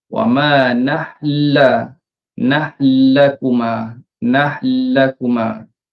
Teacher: Ini kita dah tak pergi langsung kepada huruf nun. Kita terus tuju kepada huruf lam. · Maka lam tu dengan dari segi penandaannya akan diletakkan sabdu lah, ya, letakkan sabdu. Dan bacaannya ialah kita tekankan pada huruf lam. Nun dah hilang. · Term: idgham kabir